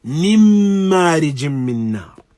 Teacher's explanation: there is no presence or mention or sound even of noon whatsoever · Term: complete assimilation